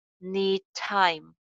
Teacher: Ending sound d hai, starting sound ch hai. So inko link karenge.